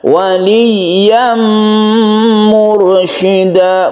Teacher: Waliyam mursyida, mursyida ra itu ditebalkan karena sebelumnya ada dhamma